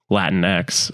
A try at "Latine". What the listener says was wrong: apparently that's pronounced Latine. because X in Spanish is pronounced E.